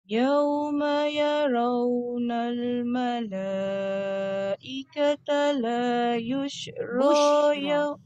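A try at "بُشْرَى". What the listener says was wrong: Bushra bukan yushra. Titiknya satu.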